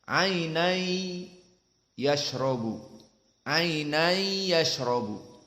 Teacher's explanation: Adkhala syai' fi syai'. Jadi tanwin masuk kepada ya, makhrajnya nun itu hilang masuk kepada makhraj ya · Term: idgham